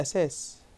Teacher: يعني كلمة أثاث بننطقها احنا أساس، هذا بالنطق الإيه العامي. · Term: النطق العامي